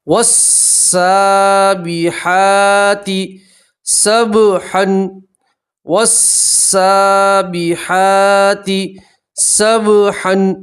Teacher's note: واو کو سیدھا سین سے ملائیں گے، الف اور لام نہیں پڑھیں گے، ٹھیک ہے، کھڑا زبر اس لیے ایک الف کے برابر کھینچیں گے۔